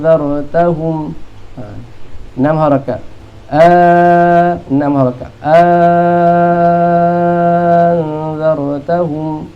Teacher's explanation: Hamzah kedua tu jadi alif, lepas tu kalau ikut alif 2 harakat lah, tapi jadi 6 harakat ni. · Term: tukar hamzah kedua dengan alif